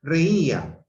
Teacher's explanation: mayor fuerza de voz en la I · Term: hiato